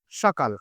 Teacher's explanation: দন্তস সাধারণত কনভার্ট হয়ে যায় তালব্যস